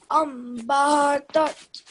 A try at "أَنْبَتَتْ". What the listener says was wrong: No, there's a fatha on ba.